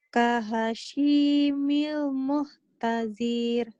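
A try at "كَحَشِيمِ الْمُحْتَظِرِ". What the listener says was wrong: Nggak ada yang panjang. Muhtadir. Gitu. Diulang.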